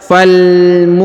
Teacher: Huruf mu dipanjangkan 2 harokat karena di depannya terdapat waw sukun ya.